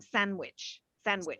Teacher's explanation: if they're speaking quite fast the d almost is omitted